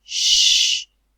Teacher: tongue is raised towards the heart the hard palate shh-shh and note the trumpet-shaped lip rounding there